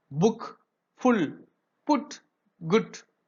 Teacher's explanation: the back part is raised towards a half closed and closed position. the lips are rounded. இத pronounce பண்ணும்போது lips வந்து roundedல இருக்குன்னு சொல்றாங்க.